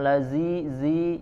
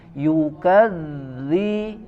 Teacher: huruf dzal dibaca diucapkan ujung lidah ditempelkan ke gigi seri bagian atas di ya tempelkan ujung lidah ke gigi seri bagian atas jadi